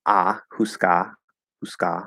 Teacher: Notice, of course, I'm just doing a schwa for that A at the end.